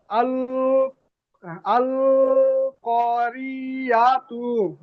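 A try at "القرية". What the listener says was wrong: জি আপনাকে বলেছিলাম একটা একটার সঙ্গে জুড়তে হবে, আপনি সবগুলো একসঙ্গে বানান করছেন, ওই জন্য করে যেখানে টান নেই সেখানে টান হয়ে যাচ্ছে। হামজা লাম জবর আল, কফ আলিফ জবর ক, আল ক, রিআতু।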